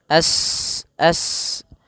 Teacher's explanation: Sin, yas, as, sifat sofirnya, sifat mengalirkan nafas atau berdesis seperti suara burung